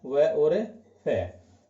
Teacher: वे व्यंजन जिनका उच्चारण ऊपर के दांत और नीचे के होठ मिलने पर होता है, वे दंतोष्ठ व्यंजन कहलाते हैं।